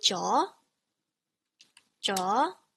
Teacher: starts in the middle of your vocal range. Okay, and then you rise until you get to the top, and you kind of just stop there. Okay, so it's like middle, and it goes kind of high.